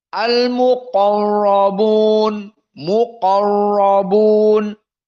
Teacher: Qaf dalam keadaan mufakhamah. Dan ra dalam keadaan mufakhamah.